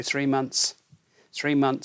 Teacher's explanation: they leave out the th and put m-o-n-t-s